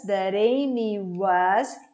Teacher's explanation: É quando o T juntado com uma vogal fica com som fraco de arara, siri. Ele tem que ser fraco para ter esse som. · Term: flap T